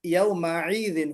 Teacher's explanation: حمزہ کی جگہ پر تھوڑا سا عین نکلا ہے